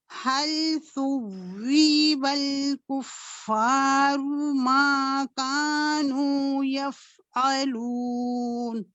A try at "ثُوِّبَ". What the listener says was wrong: اچھا، ثوی واو کی زیر کو لمبا نہیں کریں گے.